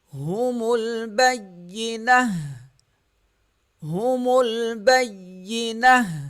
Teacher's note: یہ تا جو ہے ہا میں تبدیل ہو جائے گا